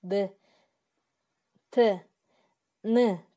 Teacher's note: Тыбышты айтканда, мисалы Д, Т, Н тыбыштарын айтканда, тилдин уш жагы тишке тийгендей абалда болот. Ошондуктан аны биз ушчулдар деп атайбыз.